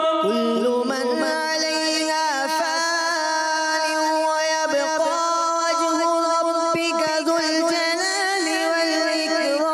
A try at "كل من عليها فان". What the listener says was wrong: فان کو زیادہ نہیں کھینچنا، غنہ ہم نے لمبا کرنا ہے، فا کو ایکل کھینچنا ہے.